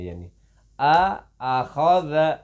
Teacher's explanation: اس زال کو ہم باریک بھی پڑھیں گے اور نرم بھی پڑھیں گے, سخت نہیں پڑھیں گے